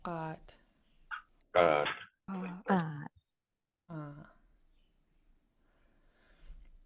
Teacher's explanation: Underline G's are pronounced in the back of your throat